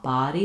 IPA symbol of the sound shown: ɑ